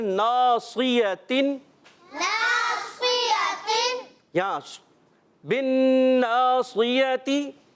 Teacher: نون مشدد میں ایک الف کا غنہ کریں گے, صاد کو موٹا رکھنا ہے.